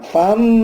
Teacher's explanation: Fa ini ada tanwin ketemu mim. Tanwin ketemu mim namanya idgham bi gunnah.